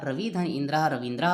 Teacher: यहाँ पर छोटा ई बड़ा ई बन गया। रवि धन इंद्रः रविंद्रः हो गया। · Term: दीर्घ स्वर संधि